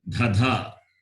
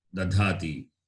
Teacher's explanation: When it is duplicated, dhadha, then the alpa prana will be, the Mahaprana will become alpa prana